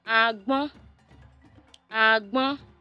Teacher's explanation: High tone on the second syllable, high tone.